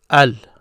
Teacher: you hear me pronounce the L because this is one of the Moon letters